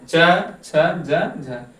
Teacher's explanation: स्पर्श संघर्षी, इसमें स्पर्श के साथ हमें थोड़ा सा संघर्ष का सामना करना पड़ता है। हमारे मुखांगों को स्पर्श के साथ थोड़ा संघर्ष करना पड़ता है बोलते समय। च, छ, ज, झ, ये चारों स्पर्श संघर्षी व्यंजन हैं।